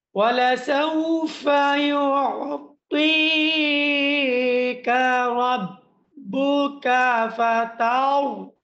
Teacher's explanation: এই জায়গার মধ্যে রাটা মোটা হবে, বেশি করে মোটা হবে।